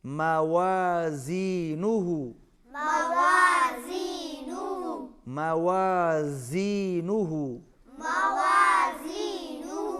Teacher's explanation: واو پر ہونٹ گول کریں گے اور زا اس میں شدت ہے، اس میں سیٹی کی آواز آنی چاہیے